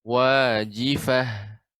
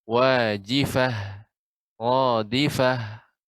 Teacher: tak marbutah ketika di ujung menjadi hak ketika disukunkan